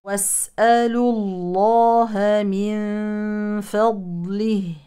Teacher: اما لو وقفنا يزول مد الصله ونقف على الهاء بالسكون عند الوقف